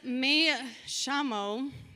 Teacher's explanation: And he explains to me that in Argentina, people say, when they say the double L's and the Y, it makes a sh sound